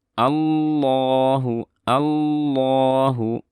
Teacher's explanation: Allah, enggak, dari ala harokat fathah langsung masuk ke lam, dan lamnya tebal